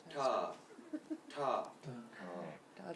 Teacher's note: When you have to say them, you say it with what we call murdanya. Your tongue lifts itself and touches the top of your palate.